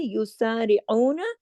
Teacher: سین سیٹی کے ساتھ آئین کو حلق سے